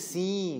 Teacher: porque quando tu diz o I, tu já diz o I nasalizado